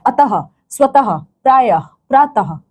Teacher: तो इसका जब उच्चारण करोगे ना तो ये ह के समान इसका उच्चारण निकलता है। · तो देखोगे अंत में ह का स्वर निकलता है, तो जहां पे अंत में ह का स्वर निकल रहा हो वो विसर्ग होता है आपका।